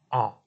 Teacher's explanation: Ein is like the aleph, a, but it's more guttural